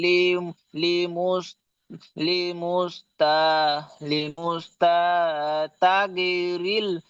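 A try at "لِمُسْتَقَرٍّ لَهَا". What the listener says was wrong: কাসরা হয়ে গেছে।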